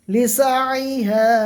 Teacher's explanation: আলিফের আগে জবর, আলিফ মাদ্দাকে এক আলিফ টান দিয়ে পড়বো